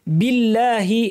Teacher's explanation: এই লামটা পাতলা হবে কারণ আগে জের আছে।